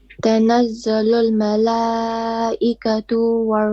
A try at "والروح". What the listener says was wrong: you stretch the ta. You said malaikatu, two. It's a short vowel. Two.